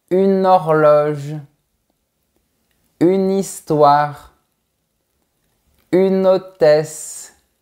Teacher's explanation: On prononce le N dans le mot UNE de manière isolée et donc va juste l’enchaîner avec le mot suivant. · les enchaînements qui unissent la consonne finale prononcée d'un mot à la voyelle initiale prononcée du mot qui suit